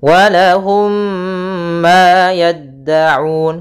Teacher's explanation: Fakihatun walahum ma, kemudian mim mati bertemu mim, kita namakan dengan bacaan idgham mimi, yaitu caranya mim matinya ditahan, masukkan ke huruf mim yang kedua dan ditahan suara nya. Walahum sepanjang 2 harokat.